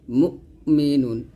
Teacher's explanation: হামজা উচ্চারণটা আইনের মত করবো না হামজাটা একটু ধাক্কা দিয়ে পড়তে হবে এবং এখানে ডাবল উচ্চারণ মুমু এরকম করা যাবে না মুমিনুন এরকম